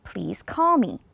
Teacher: it comes on the last stressed syllable me is not important so we want to do it on call · it's going down because it's just a normal statement just a normal sentence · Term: intonation